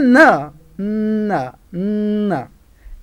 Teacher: tongue and teeth come in contact, and they block the oral tract. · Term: nasal sounds